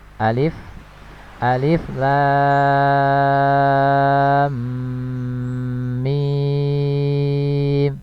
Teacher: Pada ejaan huruf lam ini ada mim sukun, kemudian bertemu dengan mim pada huruf berikutnya ya. Maka ini terjadi proses idgham mimi ya, idgham mimi ya, terjadi proses idgham.